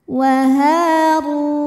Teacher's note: huruf ro dibunyikan secara tafkhim karena rnya berbaris damah maka dibacanya tebal wahu R thobii ziri karena wau sukun didahului damah maka panjang